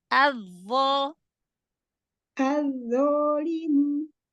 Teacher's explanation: Zo-nya angkat lagi pangkal lidah.